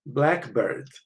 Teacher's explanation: with compounds that primary stress is on the first element, secondary stress on the second element. So if you compare 2 words in brackets, blackbird is a compound.